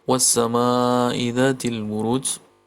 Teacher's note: Pada kata ma-nya dipanjangkan sampai dengan 5 harakat, mad wajib muttasil atau mad asli bertemu dengan huruf hamzah dalam satu kata, maka dipanjangkan sepanjang 5 harakat.